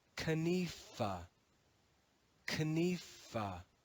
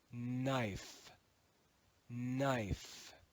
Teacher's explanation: In the cluster KN, the K in modern English is going to be silent.